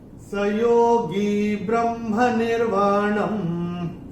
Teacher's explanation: तीसरे चरण में न के ऊपर जो ये अनुस्वार आ रहा है, ये चरण की समाप्ति पे आ रहा है, तो इसका उच्चारण म होगा